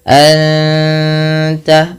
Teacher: sekedar innaka tapi ditahan anta anta ya ada bacaan ikf Hakiki Nun mati bertemu ta dua harakat sambil ditahan gunahnya sambil ditahan bunyi suara dengungannya